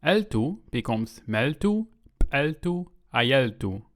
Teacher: Na'vi really doesn't like long vowels, so the two e sounds collapse into one.